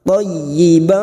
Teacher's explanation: masuk pada huruf ya yang bertasjid hanya masuk tanpa mendengung tanpa ditahan lama-lama